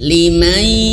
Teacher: ada nun sukun atau mati berjumpa dengan huruf shin. Nah, huruf shin ini dia termasuk huruf dari ikhfa.